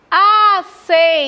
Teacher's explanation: Última, penúltima. Penúltima sílaba mais forte, paroxítona.